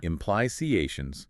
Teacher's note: Listen for the stress. It's on the third syllable.